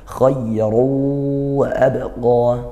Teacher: Khayru wa abqa, ru di sini ada ra berharokat, dia dhamma tanwin, maka dibaca tebal. Kemudian karena tanwin bertemu huruf wawu maka idgham bi gunnah, dibaca masuk dengung.